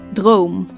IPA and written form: droːm (Droom)